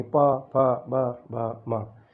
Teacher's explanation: यानी इन वर्णों को जब हम बोलते हैं, यानी प, फ, ब, भ, म, इन वर्णों को बोलते समय हमारे दोनों ओष्ठ युगल जो हैं, अधर ओष्ठ जो हैं, वो आपस में एक दूसरे को छूते हैं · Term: ओष्ठ्य वर्ण